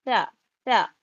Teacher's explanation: زبان کی نوک سامنے کے 2 دانت کے کنارے پہ لگے گی،